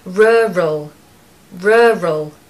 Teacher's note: Now, for the pronunciation, what you need to do is make this very strange and unusual sound, which is r, r, r, r, rural, rural. The focus and the stress is on the first syllable and you need a schwa in the second part. So you need to hear the sound in the second part.